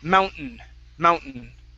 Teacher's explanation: we skip right over the t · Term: swallowed t